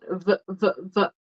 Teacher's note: So teeth, your teeth are going to be on the bottom lip. For the F, if you touch your throat, there's no vibration. But with the V, there is vibration. V, v, v. Your mouth is going to do the same thing, but it sounds different.